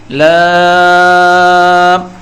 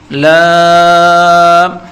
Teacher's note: زبان کے کنارے کو اوپر کی دانتوں کے مسوڑے سے لگائیں گے اور تھوڑا لمبا کر کے بولیں گے